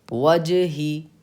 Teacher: وجہی جیم پہ بھی قلقلہ ہوگا